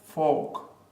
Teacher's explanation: you don't pronounce the letter R because there's a consonant sound after it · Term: silent letter r